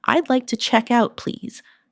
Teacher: Notice the smooth link between check and out.